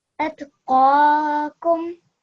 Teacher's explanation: So when you're doing these two letters together, it's very easy to make the same sound both times, but you need to just try to make sure that your mouth is a little bit rounder when you're saying qaf and a little bit softer when you're saying kaf